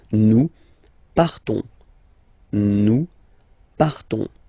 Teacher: classic ending ONS, you don't pronounce the S, you just have this on sound nasal.